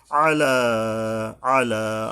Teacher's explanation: আইন গলা চেপে উচ্চারণ হবে এবং লামের উপরে এক আলিফ টানতে হবে আলা তর পরে আইন